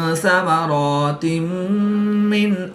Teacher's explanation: دو زیر کی تنوین کے بعد میم حروف یرملون میں سے ہے تو یہاں پر ادغام مع الغنہ ہوگا، یعنی غنہ کر کے پڑھیں گے